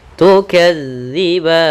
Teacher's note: Hati-hati teman-teman di lafal ganzal, jangan dibaca tukadziban. Jangan diganti dengan huruf zai, tapi dia za, yaitu ujung lidah kita menempel dengan gigi seri atas.